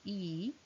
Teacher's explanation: in e the tongue front is very close to the palette